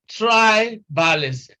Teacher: This is a word of 4 syllables and it ends in zim, and so we stress this is 1, this is 2, this is 3, this is 4. So we are stressing the 4th syllable from the end, and that 4th syllable happens to be the first in tribalism